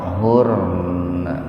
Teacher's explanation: Kalau mau berhenti di situ nunnya dibaca fathah, tapi sedikit aja, gitu. Hampir tidak terdengar.